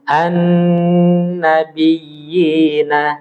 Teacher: Jadi huruf nun bertasydid itu harus ditempo. An-nabiyina, agak ditempo.